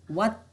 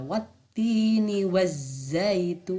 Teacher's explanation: Jadi bunyi lam tidak terlihat, masuk ke dalam huruf samsiahnya. Bukan wal tapi wat lah, wattini wazzaitun. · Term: alif lam syamsiah